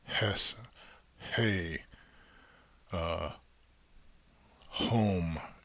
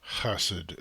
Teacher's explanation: the ch is just meant to convey that that low guttural sound. It's like deep in the throat. It's not like a smooth h sound like which is higher up in the in the mouth, higher in the throat.